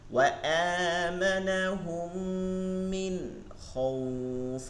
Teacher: এই যে খ হইছে নুন সাকিনের পরে, এর জন্য কি হয় নাই? গুন্না হয় নাই। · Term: ইজহার